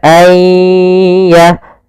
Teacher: masukkan nunnya kepada ya, sehingga nunnya hilang, tinggal ya-nya. Ayya, langsung ditasdidkan dia seakan-akan ya-nya 2, yaitu ya sukun dan ya yang bertasdid. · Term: idgham bi gunnah